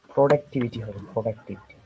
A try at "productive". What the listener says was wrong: না, প্রো না, মানে শোয়া সাউন্ড আর কি। Productive, প্রোডাক্টিভিটি, প্রোডাক্টিভিটি। হ্যাঁ, তখন হবে প্রোডাক্টিভিটি। আর এমনি প্রোডাক্টিভ, প্রোডাকশন, প্রোডাক্টিভ, আর productivity.